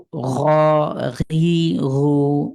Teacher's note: ঘইনকে কণ্ঠের শেষ ভাগ থেকে একটা গড়গড়ানি ভাব আসবে।